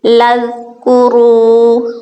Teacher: یا بنی اسرائیل اذکروا، اب دیکھیں ذال نرمی سے ادا کرنے والا حرف آ گیا، لذکروا، واو مد آ گیا، ایک الف کے برابر اس کو لمبا کریں گے اور را کو پر کر کے پڑھیں گے، کیونکہ را کے اوپر پیش آ رہی ہے اس لیے اس کو پر کر کے پڑھا جائے گا۔